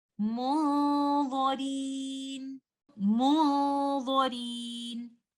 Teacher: Dha is a heavy letter. We will hide the oral part of noon sakina and only give the gunna due to letter dha, which is a heavy letter. Our gunna is going to be heavy, and we will also hold the gunna for some time. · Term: ikhfa